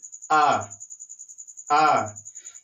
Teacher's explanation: जो जिह्वा है हमारी ये बीच में उठता है, बीच में मोटी हो जाती है, तब ये स्वर निकलता है मध्य भाग से। इसीलिए छोटा आ को मध्य स्वर भी बोलते हैं।